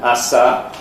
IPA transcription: ɑsɑ